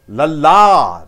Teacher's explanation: Lala, the second vowel is stressed.